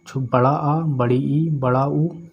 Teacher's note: वे स्वर जिनके उच्चारण में दो मात्राओं का बोध होता है दीर्घ स्वर कहलाते हैं